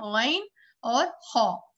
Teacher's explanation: अदनाए हलक, यानी ये ऊपर से बिल्कुल हलक के जहां जबान एक तरीके से कह लें खत्म हो रही है या हलक की शुरुआत हो रही है, वहां से गैन और खा बिल्कुल नीचे से जाके ऊपर से बिल्कुल निकल रहे हैं ये।